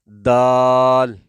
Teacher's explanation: جب زبان کی نوک اوپر کے دو دانتوں کی جڑ، جہاں سے دانت اگرے ہوتے ہیں، جڑ والا حصہ زبان کی نوک اوپر کے جڑ والے حصے کو لگے تو اس وقت یہ دال ادا ہوگی